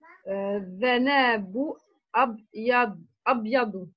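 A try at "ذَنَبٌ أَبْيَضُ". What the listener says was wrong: Zanaboun. Il y a un tanwin ici, on ne voit pas très bien. Zanaboun Abyadou.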